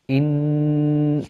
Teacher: When you have inna, the first sound that is created is the hamza from the bottom of the throat. In, and then you have a noon with a shadda on it, which means that we elongate the sound of the noon.